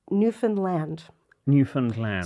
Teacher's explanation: so they emphasize the land